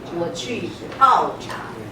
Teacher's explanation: Very important to say the P aspirated.